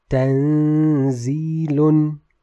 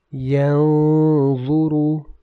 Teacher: So the ghunnah is light in tanzilun, whereas it is heavy in the word yanzuru.